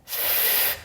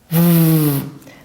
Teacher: Fazendo o teste, você vai sentir que na produção do F eu não tenho a vibração da prega vocal e na produção do som do V eu tenho a vibração da prega vocal, tornando assim o som do V um fonema sonoro e o som do F um fonema surdo.